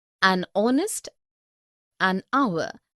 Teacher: an honest an hour because the words air honest an hour begin with a vowel sound as the initial consonant H is not pronounced